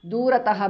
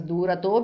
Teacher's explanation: Durataha becomes durato because of sandhi.